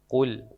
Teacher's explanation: Qul pangkal tidak keluar angin